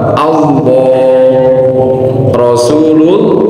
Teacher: Yang lam jalalah itu kalau sebelumnya fathah dia kan tebal.